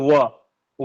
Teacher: अलग अलग कोई कंठ और ओष से बोला जाता है जैसे व व जब बोलते हैं हम लोग तो कंठ और ओष दोनों साथ में होता है